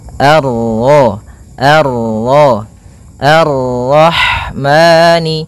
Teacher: Kemudian ini bertemu dengan huruf ro yang berharakat tasydid. Maka rnya kita baca dengan tafkhim.